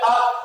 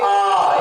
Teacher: छोटे आ की अपेक्षा 2 गुना टाइम लगेगा इसके उच्चारण में, इसलिए इसे दीर्घ स्वर के नाम से जाना जाता है।